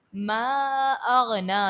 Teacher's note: غین ہے، غین کو حرف مستعلیہ ہے تو اس کو آپ پر پڑھو گے، موٹا پڑھو گے